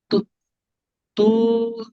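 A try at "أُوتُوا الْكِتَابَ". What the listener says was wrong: উ তুল পড়ে না, তুল, উ তুল, উ তুল কিতাবা, উ তুল কিতাবা, উ তুল কিতাবা।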